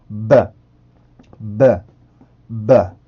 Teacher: B 발음은 유성음 발음이에요. 성대 울림을 넣어주시면 되겠죠 · P 발음의 세트 발음은 B 발음이고 양순 폐쇄음이라 그랬었죠. 그래서 입술, 양입술에 공기를 막았다가 터트려주는 발음인데요. P 발음 같은 경우는 무성음, B 발음 같은 경우는 유성음이었었죠.